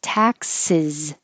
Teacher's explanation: And the S sounds like a Z at the end.